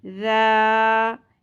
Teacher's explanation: ذال نرمی سے ادا ہوگا، ذال الف زبر ذا، ایک الف کے برابر پڑھنا ہے نرمی کے ساتھ۔ الف حرف مدہ، زبر کے ساتھ خالی الف آ رہا ہو اور الف سے اگلے حرف کے اوپر جزم یا تشدید نہ ہو تو یہ الف زبر کے ساتھ مل کے حرف مدہ بنائے گا اور ایک الف کے برابر کھینچا جائے گا، ای ذا، ٹھیک ہے۔